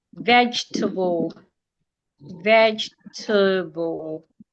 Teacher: I'm stressing the first syllable. The second e is silent.